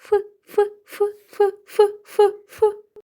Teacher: вимові звука ф створюють перешкоду і повітря вільно не виходить Тому звук ф - це твердий та глухий